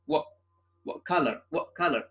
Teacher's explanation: the T is set as a glottal stop I sound maybe stopping the flow of the air by closing the vocal cords